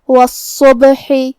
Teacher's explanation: کلمت الصبح یہاں صاد پہ تشدید ہے، تو ہم دو حرف کے برابر صاد کو پڑھیں گے. صاد حروف التفخیم میں سے بھی ہے، تو ہمیں یہ حرف کو بھاری آواز میں اور منہ پھلا کے ادا کرنا ہے. پھر با ساکن ہے، حرف البا حروف القلقلہ میں سے ہے، تو ہم یہ حرف کو ہلاتے ہوئے یہ کلمہ کو پڑھیں گے. · ہا کی ادائیگی حلق کے درمیان والے حصے سے ہے، جو کہ اس کے نیچے زیر ہے، تو ہم زیر کو ظاہر کریں گے.